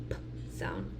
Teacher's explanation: a stop plosive bilabial which we'll be using our lips